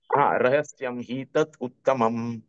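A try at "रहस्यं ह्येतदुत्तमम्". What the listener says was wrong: नहीं अब आपने ए छोड़ दिया, रहस्यम ही एतत्, रहस्यम ही एतत्।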